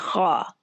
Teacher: खा बिल्कुल ऊपर वाले हिस्से से, यानी जुबान की जड़ के पीछे जहां से हलक दरअसल वहां पे खत्म हो रहा है वहां से खा निकलेगी